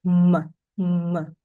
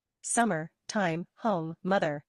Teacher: you need to close your lips, use your voice, and the sound m comes through your nose. M.